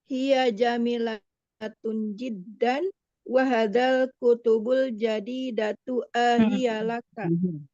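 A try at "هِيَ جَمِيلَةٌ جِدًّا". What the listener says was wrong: Jangan diangkat jiddan, ini bertanya nanti. Ya, jiddan.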